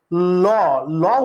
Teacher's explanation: যে ধ্বনি উচ্চারণে জিহবার দুই পাশ দিয়ে বাতাস বের হয় তাকে বলা হয় পার্শ্বিক ধ্বনি · ল, ল উচ্চারণ করলে দেখবা জিহ্বা এরকম নৌকার দুই পাশে এরকম উঁচু হয়ে যায়, ল উচ্চারণ করলে দুই পাশ উঁচু হয়ে যায়। জিহ্বার দুই পাশ উপরের দাঁতের দুই পাশে লাগে, পাশে পাশে লাগে, তাই পার্শ্বিক ধ্বনি বা পার্শ্বিক ব্যঞ্জন